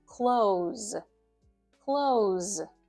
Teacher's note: The S sound at the end of the word close should be a Z, a voiced sound.